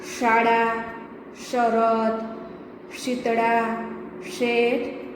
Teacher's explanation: જ્યારે શ એનો ઉચ્ચાર છે એ વખતે જીભનો વચ્ચેનો ભાગ ઉપર તાળવાને અડીને બોલાય છે